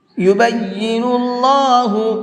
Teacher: اللہ کے لام کو منہ بھر کے پڑھیں گے، یہاں پر یبین اللہ نہیں پڑھنا ہے بلکہ یبین اللہ، اس طرح سے پڑھیں گے۔